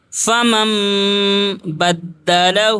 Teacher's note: نون ساکن کے بعد جس نون کے اوپر جزم ہو اور اس کے بعد حرف با آ جائے تو نون کو میم میں بدل کر پڑھتے ہیں اور اس کو اقلاب کہتے ہیں، جیسے میم میم زبر مم، نون یہاں پر نہیں پڑھا جائے گا۔